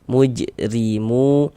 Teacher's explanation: Maka ini huruf ro dibaca tarkik, dibaca tipis.